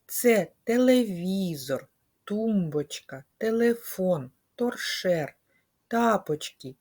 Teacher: всі ці слова починаються на твердий звук т